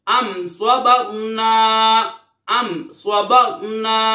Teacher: اظہار شفوی یعنی غنہ نہیں کریں گے